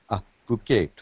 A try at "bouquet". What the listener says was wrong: Bouquet. No T.